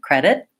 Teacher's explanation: my tongue goes up to make the T but the air doesn't get released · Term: stopped T